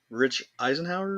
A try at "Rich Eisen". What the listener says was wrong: Rich Eisen. You said Eisenhower, but yeah, I get it.